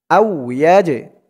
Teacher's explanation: জিমটা হচ্ছে কলকলার হরফ, ধাক্কা দিয়ে পড়তে হবে